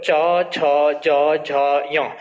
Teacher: अब तालव्य के अंतर्गत जब हम देखेंगे तो तालव्य में ध्यान देना जो चौ वर्ग होता है इसका जब हम उच्चारण करेंगे तो च, छ, ज, झ, य, इनका उच्चारण करते समय जीभ हमारी तालु वाले हिस्से को टच करती है, इसलिए इनको जो है तालव्य कहा जाता है। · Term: तालव्य वर्ण